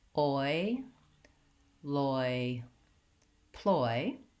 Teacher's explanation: in the dictionary you'll see it as an O and an e symbol together because we slide from aa to e I really think of it as boy more of an O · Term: diphthong, the diphthong oi